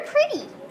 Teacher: the tongue is coming up and touching the roof of your mouth it's just a quick high five but not a handshake or think of it like your tongue is bouncing off the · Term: flap t sound